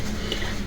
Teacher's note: کفر باریک کاف اور را پر کیونکہ را پہ زبر ہے